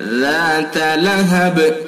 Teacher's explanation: ذا کو بالکل نرمی کے ساتھ پڑھیں گے، ذات لہب، اور با میں قلقلہ کریں گے وقف کی صورت میں